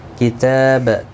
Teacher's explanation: کتاب تا کے اوپر کھڑی زبر ہے، 1 الف کی مقدار کے برابر کھینچ کر پڑھیں گے